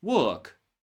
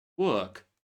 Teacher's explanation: Say letter R in the word work and you sound like an American. Don't say that letter R in the same word and you sound more like British.